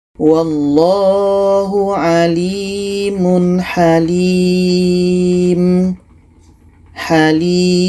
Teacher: Jadi ini adalah mad arid li sukun. Ada huruf mad ya atau ada panjang ya. Setelahnya ada huruf yang dimatikan, letaknya pada akhir ayat.